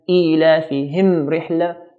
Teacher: So whenever mim sakina meets all the letters except for another mim and a ba, then we have to make the mim very clear by touching the 2 lips and then taking out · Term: ibhar